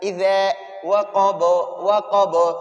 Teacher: انشاءاللہ آگے اس کی مثالیں زیادہ آئیں گی، غاسقن، اذا کو ذال اوپر نیچے دانتوں کے درمیان یہ زبان کا نوک باریک سا نکال لینا